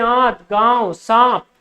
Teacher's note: उसे स्वर के साथ जो नाक से ध्वनि आएगी उसी को हम क्या बोलेंगे अनुनासिक